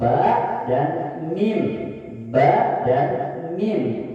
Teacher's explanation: Yang pertama 2 bibir yang saling bertemu, 2 bibir yang dimonyongkan. 2 bibir yang saling bertemu hurufnya ada 2, ba dan mim